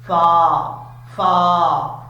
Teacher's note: فقالوا، فا کو پڑھتے وقت ہونٹ گول نہیں کرنے، فا کا مخرج آپ کو پہلے کئی دفعہ بتا چکا ہوں، اب پھر بتا رہا ہوں کہ اوپر والے جو دو دانت ہیں ان کا کنارہ نیچے والے ہونٹ کی تری والی جگہ پہ لگے تو فا پڑھا جاتا ہے